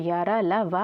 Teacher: फिर आता है अंतस्थ व्यंजन। अंतस्थ वे ध्वनियाँ जिनका उच्चारण करते समय मुखांग आंशिक रूप से आंशिक स्पर्श करता है, तो उन्हें अंतस्थ व्यंजन कहते हैं।